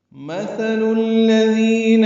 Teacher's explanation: مثل میں تھا کو نرمی سے ادا کریں گے، لام کو الذین کے لام سے ملا دیں گے